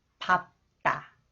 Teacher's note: And next one is the same rules. And 디귿, when 디귿 follows the final consonant 리을 비읍, that is pronounced 비읍. The 디귿 is pronounced 쌍디귿